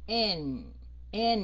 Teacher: cái âm N ở cuối mình sẽ xuống giọng mũi